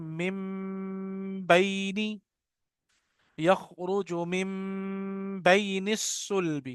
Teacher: अब हम इसको मिन बैनी नहीं पढ़ते, हम इसको पढ़ते हैं मिम बैनी · तो ये मीम डायरेक्ट आके इस वाले मीम से मिलती है। पहले मीम पढ़ेंगे हम, और उसके बाद लफ्ज बा मुंह से निकलेगा।